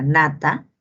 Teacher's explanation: Luego tiene la N, el fonema es el fonema nasal, nasal alveolar sonoro, en la palabra nata, la letra N.